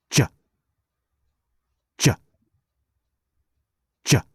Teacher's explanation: be careful not to say JA do not add a vowel sound